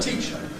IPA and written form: ˈtiʧə (teacher)